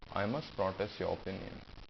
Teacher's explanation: You can drop the R sound also.